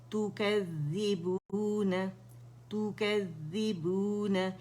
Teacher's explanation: ذال مشدد ہے, باریک ہے